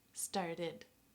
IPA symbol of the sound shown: id